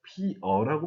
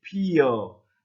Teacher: 이를 덧붙여서 여로 발음하는 사람도 많이 있습니다. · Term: 반모음 첨가